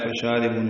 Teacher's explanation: شین کو 2 حرکات لمبا کرنا ہے. را باریک ہے، بو واو مد ہے.